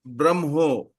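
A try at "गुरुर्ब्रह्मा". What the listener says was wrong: No, should not. Gurur Brahma, not Brahmo. Brahma, Visarga is not there. Visarga is there, it becomes wo. Gurur Brahma. Brahma Visarga is not there. So Brahmo is wrong. We should not say.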